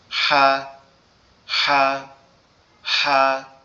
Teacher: ফ্যাসফ্যাসানি গলা চাপা একটা আওয়াজ হবে